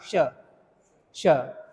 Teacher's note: यह श बोला जाता है। इसलिए तालव्य सकार कहलाता है।